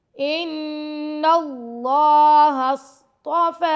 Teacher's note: فا پر کھڑا زبر ہے تو فا کو 2 سیکنڈ تک لمبا کر کے پڑھیں گے، ان اللہ اصطفى، فا پر کھڑا زبر آ رہا ہے، فا کو 2 سیکنڈ تک لمبا کر رہے ہیں، ٹھیک ہے۔